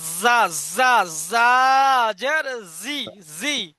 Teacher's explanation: একটু চেপে দেবেন। জিভের আগা, সামনের উপরে দুই দাঁতের আগা এবং নিচের আগার সাথে লাগান। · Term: শিন